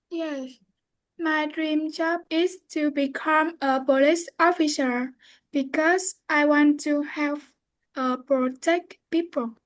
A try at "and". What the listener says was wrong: Perfect. Just remember to clearly pronounce the and. Don't forget that.